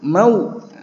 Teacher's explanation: dibaca lin ya. Dari fathah ke dhammah, bibir mencucu sempurna.